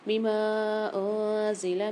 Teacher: میم کے ساتھ الف اور مد دونوں ہیں، 4 سے 5 الف کی مقدار کھینچ کے پڑھیں گے